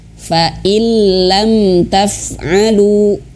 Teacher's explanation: kalau huruf lam dan ro ini dia hanya sekedar masuk tapi tanpa dengung gitu, nggak dengung dia ya.